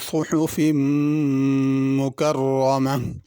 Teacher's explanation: सुहुफ़ की स्वाद पुर करके पढ़नी है, हा बड़ी है, सुहुफ़ छोटी हा से नहीं पढ़ना।